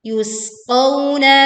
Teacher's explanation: Kita baca sin sukun dengan suara yang tipis dan seruit tajam muncul saat dibacakan qawna.